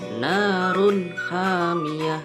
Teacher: Yang terakhir hukum bacaan izhar halqi. Hukum bacaan izhar halqi dikarenakan tanwin bertemu dengan huruf kha, maka Cara membacanya, suara tanwin harus jelas dan terang.